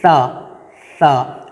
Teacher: اچھا، یہ ثا، اس کی ادائیگی میں ہم اکثر غلطی کرتے ہیں کہ ہم ثا کو سین کی طرح پڑھتے ہیں، جیسے کہ سا، سیٹی کی آواز اس میں بالکل بھی نہیں آنی چاہیے، بہت ہی نرمی سے ثا، ثا۔ اپنی زبان کو جب آپ اپنے دونوں اوپر والے دانتوں اور نیچے والے دانتوں کے درمیان میں رکھ کر آپ جب پڑھیں گے ثا، تو بہت ہی اچھے سے ادا ہوگا ثا۔